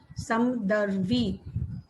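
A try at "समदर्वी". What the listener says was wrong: Not Samdarvi. Samadarvi. Not this is not Hindi.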